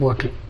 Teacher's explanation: T and L combination syllabic consonant అవుతుంది కాబట్టి దీన్ని పలికేటప్పుడు మనం బాటిల్ అని పలుకుతాము, టిల్ అని పలుకుతాం.